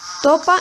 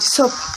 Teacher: También utiliza el proceso de sustitución, es decir, puede decir topa en vez de decir sopa. Generalmente suelen sustituir la fricativa S por la oclusiva T, que es más fácil de articular.